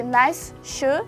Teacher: The sound s becomes sh here, yeah? So it is assimilated sound, and it is called assimilating sound. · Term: assimilation